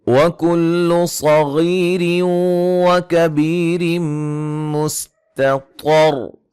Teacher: صاد کو موٹا، غین کو موٹا، یا مدہ ہے، نون تنوین کا ادغام مع الغنہ ہے